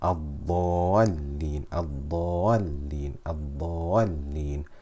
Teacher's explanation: Many reciters do not do nabr and they make it sound as if there's only one lam.